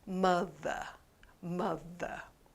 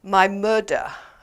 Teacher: the th sound, which often is pronounced as a d sound. I was very surprised when I came to Korea and one student said, "My murder." And I said, "Murder?